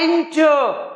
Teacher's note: देखिए stress N पे है